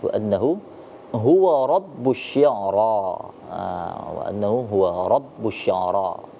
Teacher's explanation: Ra-nya ini dibaca tafkhim, dibaca tebal.